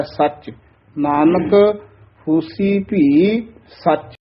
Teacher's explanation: ਭੀ ਸਚ ਨਹੀਂ ਕਹਿਣਾ ਹੈ ਭੀ ਸਚ ਕੋਈ ਪਾਠ ਨਹੀਂ ਹੈ ਹੋਸੀ ਭੀ ਇਥੇ ਥੋੜਾ ਜਿਹਾ ਠਹਿਰਾ ਦੇ ਕੇ ਫਿਰ ਨਖੇਰ ਕੇ ਬੋਲਣਾ ਹੈ